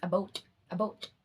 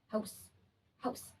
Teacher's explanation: Canadian English raised the ow before voiceless consonants